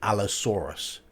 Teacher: A-U-R in British English is or, so it'd be Allosaurus.